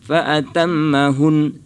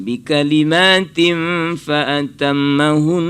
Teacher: harusnya itu hunnya itu diberikan dengungnya walaupun dia wakaf ya, jangan fa'atammahun, harus didengungkan bi kalimatin fa'atammahun ya kan.